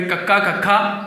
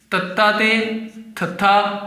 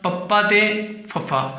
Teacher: ਮਤਲਬ ਇਹ ਜਿਹੜੇ ਹੈਗੇ ਹੈ ਇਹ ਗੋਸ਼ ਹੈ, ਇਹਨਾਂ ਨੂੰ ਬੋਲਦੇ ਸਮੇਂ ਉਹ ਨਾਦ ਪੈਦਾ ਨਹੀਂ ਹੁੰਦੀ ਜਿਹੜੀ ਹੁੰਦੀ ਹੈਗੀ ਹੈ ਗੋਸ਼ਾਂ ਦੇ ਵਿੱਚ। ਮਤਲਬ ਇਹਦੇ ਵਿੱਚ ਸੁਰ ਤੰਤਰੀਆਂ ਦੀ ਜਿਹੜੀ ਕੰਬਾਮਾਪਨ ਹੈ, ਜਿਹੜਾ ਉਹਨਾਂ ਦੀ ਵਾਈਬ੍ਰੇਟਨ ਹੈ ਜਾਂ ਵਾਈਬ੍ਰੇਸ਼ਨ ਹੈਗੀ ਹੈ, ਉਹ ਜਿਹੜੀ ਹੈਗੀ ਹੈ ਉਹ ਕੀ ਹੁੰਦੀ ਹੈਗੀ ਹੈ, ਘੱਟ ਹੁੰਦੀ ਹੈ, ਤੇ ਕੋਸ਼ ਦੇ ਵਿੱਚ ਉਹ ਜ਼ਿਆਦਾ ਹੁੰਦੀ ਹੈਗੀ ਹੈ।